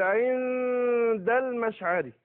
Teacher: انا بجيب الغنه حركتين اهو وبعدين بدخل على الدال · ليس بين العين والدال الا غنة، لان بيذهب ذات النون وبتبقى الصفة بتاعتها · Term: الإخفاء